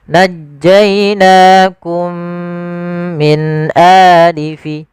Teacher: Cara membacanya yaitu kita masukkan mim yang pertama kepada mim yang kedua kemudian ditahan dengan gunahnya. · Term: idgham mimi